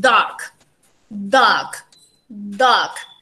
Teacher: we can touch the alveolar ridge or little bit the palate, but usually we touch the alveolar ridge